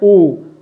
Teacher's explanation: ओ का उच्चारण स्थान जो है दोस्तों ये आपका है कंठ और ओष्ठ को मिला करके ये उच्चारण होता है